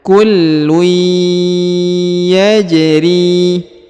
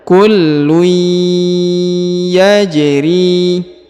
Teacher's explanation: huruf tanwin bertemu dengan Ya maka menghilang dan lebur serta ditahan dan ditekan